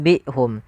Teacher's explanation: kita ganti suara nunnya diganti dengan suara mim, maka ditandai dengan mim kecil di atas katanya atau di atas huruf nunnya, supaya kita membaca mim, nun sukunya diganti dengan mim. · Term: iqlab